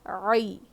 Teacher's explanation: عین کی آواز حلق کے بیچ کے حصے سے آنی چاہیے